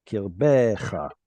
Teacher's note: It should have been kirbecha, but in pausal form, we're going to get a lengthened vowel with the stress.